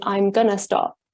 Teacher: this form gonna is a kind of a coalesced version of going to, and then we've got I'm, which is a coalesced version of I am.